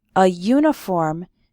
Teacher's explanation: we say a uniform because uniform starts with a y sound